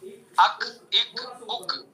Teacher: کاف کا مخرج زبان کی جڑ سے کچھ اوپر کا حصہ اور اس کے مقابل اوپر کا تالو